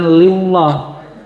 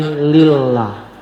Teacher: Lillah, lafal Allah, tapi sebelumnya berharokat kasroh, maka harus dibaca tipis. Jangan lillah, tapi lillah, ya.